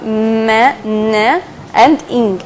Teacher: and n and in sound okay these are nasal sounds like we are trying to block air from our mouth and let the air pass through our nose